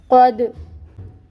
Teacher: قوف پر ہوگا، حروف مستعلیہ میں سے ہے، اور دال ساکن ہے، حروف قلقلہ میں سے ہے، اس کو ہلائیں گے، قلقلہ ہوگا۔ قوف کے اوپر جو فتح کی حرکت ہے اس کو 1 کاؤنٹ ادا کیا جائے گا۔